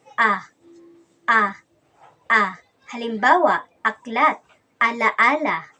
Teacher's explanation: Ang posisyon ng ating dila sa ponemang A ay nasa mababa at ang bahagi naman ng ating dila ay nasa sentral.